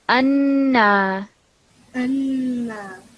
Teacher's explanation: And this noon over here, because it's a noon mushaddad, we're going to kind of make a very strong nasal sound